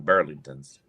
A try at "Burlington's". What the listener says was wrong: Not Burlington. No, he said Burlington's with an S.